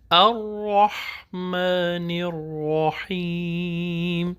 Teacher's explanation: قرآن مجید میں تکرار الاؤ نہیں ہے، اس کی اجازت نہیں ہے، تو ہم ایک ہی آواز نکالیں گے، را کی ڈبل آواز نہیں نکالیں